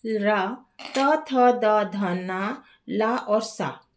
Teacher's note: अब जो दंत वर्ण है डेंटल लेटर वे वर्ण होते हैं जिन्हें बोलते समय जीभ दांतों अर्थात दंत को छूती है। इसीलिए इन्हें दंत वर्ण कहा जाता है।